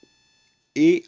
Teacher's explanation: ए आपकी संयुक्त स्वर आता है क्योंकि इसमें अ और ई का योग होता है।